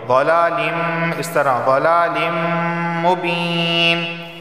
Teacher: تنوین کے بعد میم آیا ہے اور میم حروف یرملون میں سے ہے، تو یہاں پر ادغام اور غنہ دونوں ہوں گے